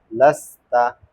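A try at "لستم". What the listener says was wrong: এখানে শিন না সিন লাস্তা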